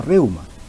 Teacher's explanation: De la misma manera, la palabra reuma configura el diptongo, ¿no?, decreciente por cuanto primero presenta vocal abierta y luego vocal cerrada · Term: diptongo decreciente